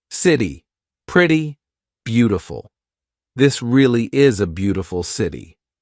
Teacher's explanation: This is when T sounds like a very quick D. Very big in American pronunciation. So when the letter T is in between two vowel sounds or diphthongs, all right, we're going to use that quick D. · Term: flap T